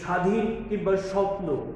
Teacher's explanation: শব্দের শুরুতে যদিও ব ফলা অনুচ্চারিত থাকে কিন্তু এখানে সামান্য ঝোঁক একটা শ্বাসাঘাত করে।